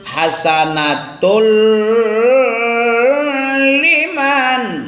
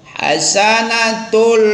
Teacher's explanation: kita leburkan, kita idghamkan tanwin ke dalam lam tanpa pakai gunah. Langsung cepat aja tapi dilebur gak boleh. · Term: idgham bila gunah